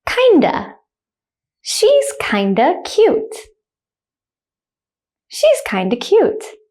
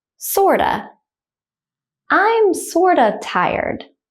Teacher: instead of saying of, we're going to use the schwa sound, the kind of sound, to make these contractions.